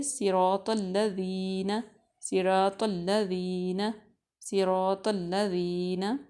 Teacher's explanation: صراط موٹا اور اونچا پڑھیں گے، صاد کو، را کو بھی موٹا پڑھیں گے اور طا بھی موٹا اور اونچا پڑھیں گے۔ یہ چھوٹا سا میں نے طا لکھا ہوا ہے نیچے، موٹا اور اونچا اس کے آگے لکھا ہے، ٹھیک ہے، صراط۔